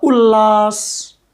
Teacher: त के बाद ल आया है तो त का ल हो गया